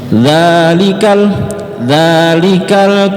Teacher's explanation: Huruf dza kemarin kita sudah belajar, letakkan ujung lidah di belakang gigi seri atas.